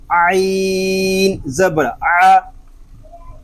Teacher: عین حلق کے درمیان والے حصے سے ادا ہوگا، اور عین کو ادا کرتے وقت حلق پر زور دے کر اس کو ادا کریں گے